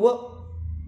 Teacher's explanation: व जर म्हटलं तर दात आणि ओठ दोघांचंही काम सुरू होतं, म्हणून काय ते दात आणि ओठ, त्याला काय म्हणतो, काय म्हणू आपण, दंतोष्ठे म्हणूया.